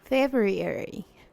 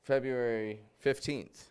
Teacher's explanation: I'm not pronouncing the R within the word.